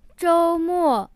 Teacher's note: 周, the first tone, means week, and 末, the fourth tone, means end.